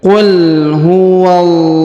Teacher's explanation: Qul huwallahu, bukan qul huwallahu, qul huwallahu ya, bukan ya. Tapi huruf waw langsung disambung, lidah kita masuk ke huruf lam pada lafzul jalalah. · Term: tebal